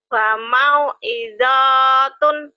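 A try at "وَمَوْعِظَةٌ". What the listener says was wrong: pendek semua. Pendek semua. Pendek semua. Nggak ada yang panjang. Wa mau'izatun.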